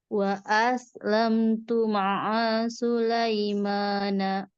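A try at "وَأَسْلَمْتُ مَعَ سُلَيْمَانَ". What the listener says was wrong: Oke a-nya sudah kena Anya masih kepanjang dikit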